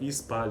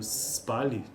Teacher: na prática vai ocorrer uma vogal antes então nós vamos sempre pronunciar ispal